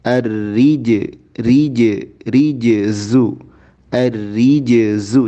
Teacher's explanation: Kemudian ar-rijzu, jim menghadapi zai, jangan ar-rizzu, tapi qalqalah jim jelaskan ar-rijzu, ar-rijzu, jangan ar-riz, jangan langsung ke zai, tapi jimnya jelaskan.